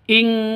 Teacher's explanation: In kuntum. Nun mati bertemu dengan kaf, samar didengungkan, siap-siap ke huruf kafnya. Nun matinya ditambah dengan ng. Ing, makanya disebut dengan seperti ini. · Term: ikhfa hakiki